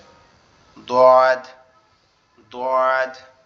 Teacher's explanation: যে কোনো এক সাইডের উপরের মাড়ির সাথে লাগবে, আমাদের জিহ্বার গোড়া যে কোনো এক সাইডের মাড়ির সঙ্গে লাগবে, লেগে উচ্চারিত হবে